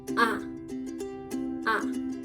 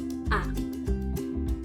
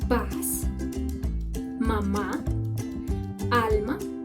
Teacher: The A is a non-round central open vowel and its pronunciation is A. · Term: The vowel A